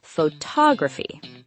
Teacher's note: the stress shifts to the second syllable, photography.